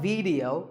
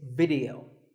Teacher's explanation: The important thing is that both the I and the E are pronounced as short I sounds.